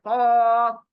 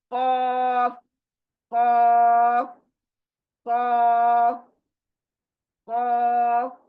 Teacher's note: हलक के अंदर जो जुबान उल्टी लटकी ऐसे नजर आती है छोटी, वो नरम तालू है, वहां से इसको अदा करना है